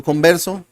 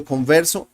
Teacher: in Colombia we don't make differences between B and V